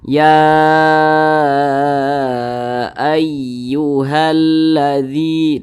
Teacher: Nah, karena dia mad jaiz munfasil, maka dikasihlah tanda panjang berbentuk seperti bendera ini. Nah, mad jaiz munfasil itu panjangnya boleh 5 harokat, boleh juga 4 harokat